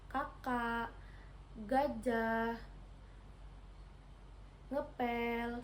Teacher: dorsovelar ini terjadi ketika punggung lidah atau lidah bagian belakang menyentuh langit-langit lunak. Bunyi yang dihasilkan yaitu ke, ge, eng, dan ek.